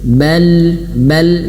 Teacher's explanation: Cara bacanya dialirkan suaranya karena dia memiliki sifat tawassut.